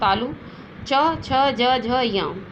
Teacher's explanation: इनकी जाति तालव्य है और इनको च वर्ग में रखा जाता है